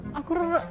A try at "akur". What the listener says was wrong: Nah, kurang panjang R.